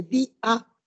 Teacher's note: se pronuncia separado no hay diptongo